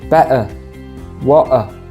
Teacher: So instead of saying better or water, you would say better, water. The glottal stop is typical of some accents, especially the London accent.